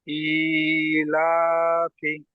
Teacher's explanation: লামের উপরে খাড়া যাবার আসছে, এটি হচ্ছে আলিফ মাদ্দার সমতুল্য, এটিকে এক আলিফ পরিমাণ টান দিয়ে পড়তে হবে। ফায়ের নিচে জের এসছে, এটি হচ্ছে হারাকাত, হারাকাত পরে তাড়াতাড়ি পড়তে হবে, টান দেওয়া নিষেধ।